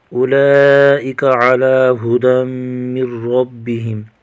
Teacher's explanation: لام پر مد متصل ہے، 2 سے لے کر 4 الف تک کھینچ کر پڑھیں گے